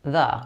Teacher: the is pronounced as thuh rather than thee